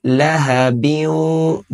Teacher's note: با کو واؤ کے ساتھ ملاتے ہوئے غنہ کریں گے